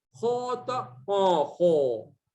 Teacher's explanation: Coba dia kalau dikeraskan dikit, khota, kho. Muncung dia, jadi seolah-olah itu di atasnya dhammah. Gara-gara terlalu tebal.